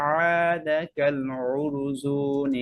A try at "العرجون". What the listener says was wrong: উরজু জিম হয় নাই عاد كالعرجون القديم عرجو عرجو